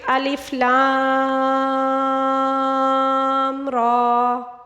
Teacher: کھڑا زبر جو ہے اس کو ایک الف کے برابر کھینچنا ہوگا